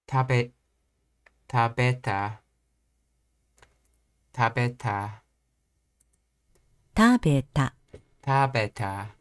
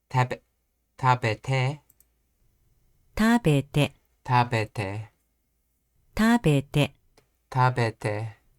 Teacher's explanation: For Nakataka verbs, for the past tense conditional forms, the step down is on the third to last mora.